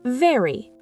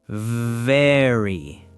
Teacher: V sounds like VV. Your top teeth touch your bottom lip.